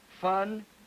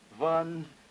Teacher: Voiceless and voiced spirants, as in fun, vun